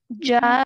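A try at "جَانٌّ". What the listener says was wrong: Good. Hold for longer.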